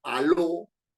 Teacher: digo Aló No es cierto tengo a y lo dos sílabas el mayor golpe de voz está en lo en la última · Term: aguda